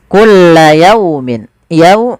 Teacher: Yau di sini ada fathah bertemu waw. Bacaan lin harus lembut.